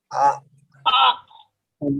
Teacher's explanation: 2 নম্বর মাখরাজ হলো কণ্ঠনালীর মাঝখান হইতে উচ্চারিত হয় আইন হা